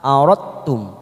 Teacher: ada huruf dal sukun bertemu tak yang bertasdid, di sini sifat qalqalanya hilang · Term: idgham mutajanisain